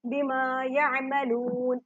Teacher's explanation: आइन जब साकिन होता है झटका नहीं देते, नॉर्मली पढ़ते हैं। बू को लंबा करेंगे, जिसम वाली वाव पहले पेश ही कली तक लंबा होगा।